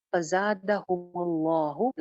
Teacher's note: فزادہ زا سٹی کے ساتھ ہے، فزادہم اللہ لفظ جلالہ کو موٹا کریں گے